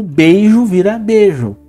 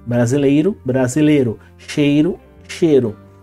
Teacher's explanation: a semivogal do ditongo ele engole ele é engolido ele praticamente desaparece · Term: monotongação